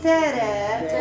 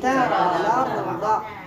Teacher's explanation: الترقيق حذف بسبب التقاء الساكن ولكن عند الوقف ممتاز جميله اذا عند الوقف غيكون واحد الالف نمال هو اللي غ يعطيني ترقيق الرا